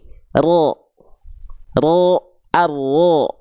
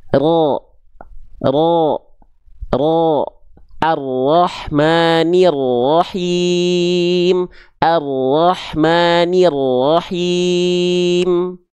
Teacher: huruf r dilafalkan bukan betul-betul dari ujung lidahnya tapi dia dilafalkan dari bagian punggung lidah kita · jadi yang disentuhkan itu adalah bagian punggung lidahnya bukan si ujungnya sehingga si ujungnya ini membuat sedikit celah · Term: huruf ro